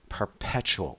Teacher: Perpetual with stress on the second syllable.